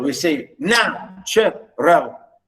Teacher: we start high and then we go down